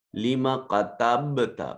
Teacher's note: با ساکن ہے قلقلہ واجب ہوگا